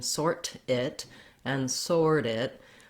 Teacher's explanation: I tap up to that flap and my voice is on.